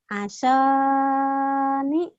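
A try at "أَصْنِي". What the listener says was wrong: Jangan kepanjangan.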